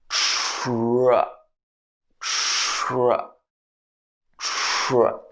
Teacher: So technically this is t plus r, but you don't pronounce the full t sound. They blend together in a blending sound.